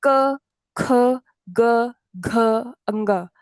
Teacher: ये हम कंठ यानी थ्रोट से बोलते हैं